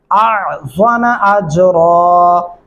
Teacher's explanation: الف اور عین کی آواز الگ الگ ہونی چاہیے، آزامہ نہیں کرنا ورنہ 2 سے 3 غلطیاں ہو جائیں گی.